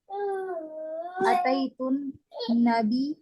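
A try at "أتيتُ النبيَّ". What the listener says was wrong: Harokat akhir jangan ditinggal. Harokat akhir jangan ditinggal. Atau itu Nabi apa?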